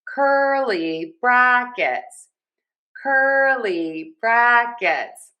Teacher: For curly brackets, we have a great stress pattern here. Stress, unstress, stress, unstressed.